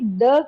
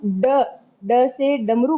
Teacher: द के उच्चारण करते समय जिह्वा जो है हमारी तालू पे लगती है, और जो हम ड ड से डमरू बोलते हैं तो हमारी जिह्वा मूर्धा पे लगती है, जो हमारा खुरदरा हिस्सा है दांत के पीछे वहां पे।